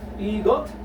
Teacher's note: You read this S or siot as T, since this is the last part of the syllable. 1, 2, 3. Last part, it will be pronounced as T.